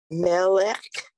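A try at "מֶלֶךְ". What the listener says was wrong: Mel is correct, but it's Mel K.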